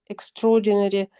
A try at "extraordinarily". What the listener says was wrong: So I think you said extraordinary. But it's got an ILY on the end of it. It's basically the same word, but with a slightly extra longer ending. It's slightly different.